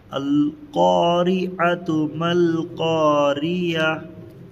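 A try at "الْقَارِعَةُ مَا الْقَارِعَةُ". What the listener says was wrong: دیکھو یہ عتو پڑھتے ہیں لیکن یہ یا پڑھ دیتے ہیں۔ القارعۃ ما القارعہ، عہ ہونا، یہ نہیں ہونا۔ پھر سے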